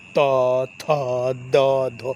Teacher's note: देखिएगा जी्हा दांत से टकराएंगे थ ठीक यहां से देखिए देखिए त वर्ग वाला जो सब वर्ण आता है ना तो ये सब टकराते हैं दांत से